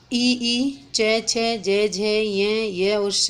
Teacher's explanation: ऐसे ही ईचू यशा नाम, अगर हम सूत्र से लेते थे ईचू यशा नाम अर्थात तालु, तो ई, च, छ, ज, झ, ये और श, ये सब क्या हैं, तालु से निकलने वाली ध्वनि है